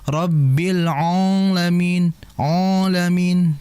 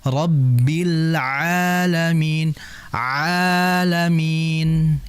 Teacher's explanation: Karena ain itu tidak keluar dari hidung melainkan dari tengah tengah tenggorokan